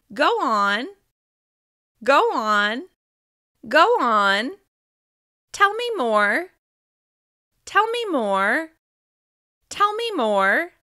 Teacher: you can hear holding intonation, or a slight rise that signals that you're not trying to interrupt. You're reflecting the other person's incomplete idea or story back to them.